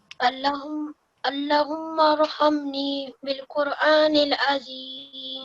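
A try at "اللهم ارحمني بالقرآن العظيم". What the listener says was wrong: Make sure that you prolong this, okay? Allah has to be prolonged.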